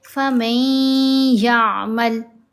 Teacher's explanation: غنہ مطلب آواز کو ہم ناک میں پڑھیں گے اور آواز کو لمبا کھینچا جائے گا، 2 حرکت کے برابر ہوتی ہے مقدار غنہ کی۔